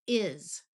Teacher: Sometimes the letter S has the sound of z, like in is.